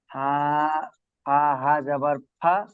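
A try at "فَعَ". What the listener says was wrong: ওটা হা নয়, আইন আইন। ফা আইন জবর ফা।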